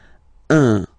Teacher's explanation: So it's what we call the nasal, so it goes in your nose, okay? So if you listen to me, you don't hear any N